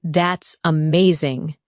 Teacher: When you say, "That's amazing," your tone rises with excitement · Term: intonation